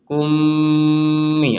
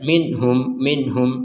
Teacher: Kumi ada jeda 2 harokat. Kalau yang jelas gak ada jeda sama sekali, langsung aja minhum seperti itu.